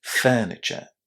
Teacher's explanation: because my accent is British, I don't pronounce the letter R.